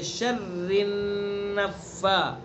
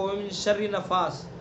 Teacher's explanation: را کو باریک پڑھیں گے اور را کو نون میں آگے ملائیں گے. شر النفا، اس طرح ملائیں گے کہ نون کے اندر غنہ بھی کریں گے.